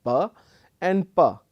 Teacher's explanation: they are both plosives you basically block the air using both of your lips and then release there